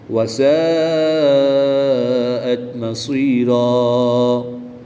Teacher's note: الف مدہ کے بعد حمزہ اسی کلمے میں ہے تو یہاں پر مد متصل ہوگی، 3 سے 5 الف تک کھینچ کر پڑھیں گے۔ 2 زبر کی تنوین کو وقف کی حالت میں الف مدہ سے تبدیل کر کے پڑھیں گے۔